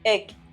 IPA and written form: eɡ (egg)